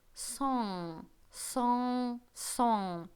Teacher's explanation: Потому что сочетание н и г дает G не произносится здесь. Мы представим, что сейчас у нас небольшой насморк, и мы простужены, и мы произносим в нос этот звук.